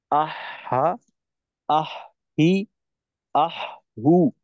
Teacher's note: হলকের একটু নিচের দিকে চলে যায় অর্থাৎ হলকের শুরুর দিকে চলে যায় তো এই জায়গাটাকে পরিবর্তন করা যাবে না একই জায়গার থেকে আর